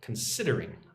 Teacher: second syllable gets the emphasis